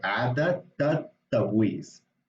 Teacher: the T is one of these letters that gets sort of doubled because the L of the al disappears. So what you have is these two T's because you have التبويس, but then before that you have عادة.